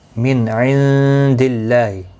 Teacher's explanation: نون ساکن کے بعد حلقی عین آیا ہے، اظہار حلقی ہوگا، گناہ نہیں کریں گے · کیونکہ اللہ کے لام کے پچھلے حرف کے نیچے زیر ہے، اس لیے باریک پڑھا جائے گا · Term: اللہ کا لام